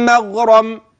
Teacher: في قول مغرم الميم مرققه الغين مفخمه والراء بعدها مفخمه